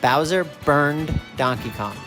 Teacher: we can sing the n in burn and when we can sing it we end it in a d